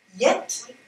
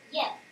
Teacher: j'insiste sur la consonne en finale de mot et sur l'opposition orale nasale T et N